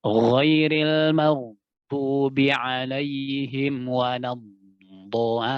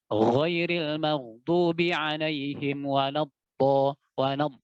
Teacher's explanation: Jadi antum tumpu di makhrajnya lam supaya apa? Sifat rakhwa daripada huruf dhad itu tampak.